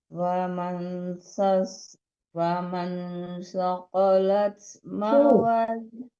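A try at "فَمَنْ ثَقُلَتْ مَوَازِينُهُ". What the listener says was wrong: Faman thaqulat, bukan qalat.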